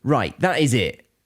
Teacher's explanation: So very quick, aggressive, pretty much stressing each word of that sentence.